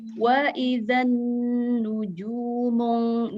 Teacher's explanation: Wa idzan nuju itu 2 harokat karena ada dhammah bertemu dengan waw mati.